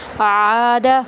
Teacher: عین کو وسط حلق سے ادا کرتے ہوئے ایک الف کے برابر لمبا کریں گے